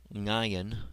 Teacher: has more of an NG sound than the silent sound of modern Hebrew